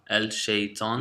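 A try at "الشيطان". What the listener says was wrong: No, not al. Ash-shaytan. Ash-shaytan. Now you're going to learn later on that there are sometimes the lam goes into the next letter. That whole thing is called the sun letters and the moon letters.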